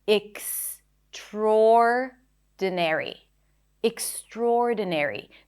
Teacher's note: The primary stress is the or vowel.